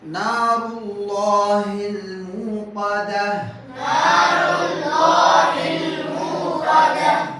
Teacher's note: சொல்லுங்க எரிக்கப்பட்ட நாருல்லாஹில் மூகதா நாருல்லாஹில் மூகதா ரா தம்மா பெற்று வரனால வல்லினமாக சொல்ல வேண்டும். · அல்லாஹ்வுடைய லாமுக்கு முன்னால தம்மா வரனால தஃகீம். சொல்லுங்க தஃகீம் அல்லாஹ்வுடைய லாம வல்லினமாக ஓத வேண்டும்.